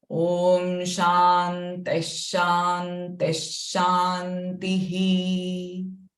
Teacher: the Visarga sound will be sh, followed by her sound at the end